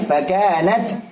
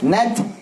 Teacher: Hamasnya pada ta, jangan lupa ada syiddahnya.